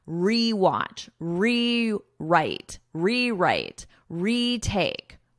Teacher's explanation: We pronounce this as a full re, e. It has that long E sound.